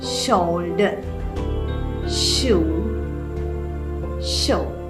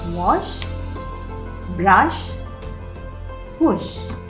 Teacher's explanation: It is made through mouth and it is unvoiced because we don't use our vocal cords to make the sound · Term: sh sound